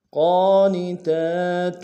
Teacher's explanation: قاف کے اوپر کھڑا زبر ہے، موٹا ادا کریں گے، کھڑا زبر کو ایک انداز میں کھینچیں گے